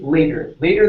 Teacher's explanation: give me a flap T here